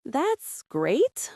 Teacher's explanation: With flat intonation sounds sarcastic or unenthusiastic.